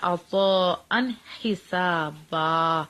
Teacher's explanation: نون ساکن نون تنوین کے بعد ہائے تو اظہار ہوتا ہے. یہ سیدھا جیسے آپ کو آتا ہے ایسے آپ نے پڑھنا ہے.